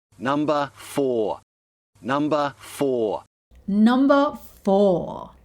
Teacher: Again, we have two words here that end with an R sound. And again, he replaced the R sound with the schwa sound.